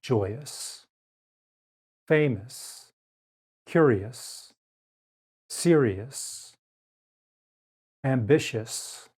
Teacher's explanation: the letter combination o u makes the uh sound in unstressed syllables